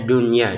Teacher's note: Untuk kata addunya kita enggak masukkan nun ke ya karena memang ini berada di dalam satu kata ya. Kalau berada di dua kata, maka dimasukkan dengan dengungan ya.